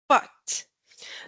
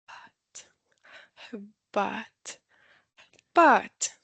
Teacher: instead of producing the word with a very stiff and with a lot of pressure, we will add the easy onset sound the sound and glide the sounds out like this.